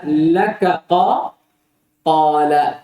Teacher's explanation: Kaf ketemu dengan qaf. Kaf dan qaf dua huruf yang mutaqaribain, dekat pada makhrajnya, maka boleh diidgham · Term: idgham kabir